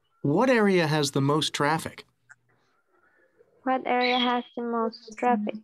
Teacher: delete the final t and link the s to most consonant sounds